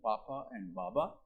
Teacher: they are called bilabial sounds because they are produced on the lips